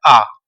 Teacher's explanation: ठीक है, पूरा मुंह खुल जाए, तो वो आपका विवृत होता है। तो ऐसा मात्र एक ही स्वर है जिसमें हमारा मुंह लगभग पूरा खुल जाता है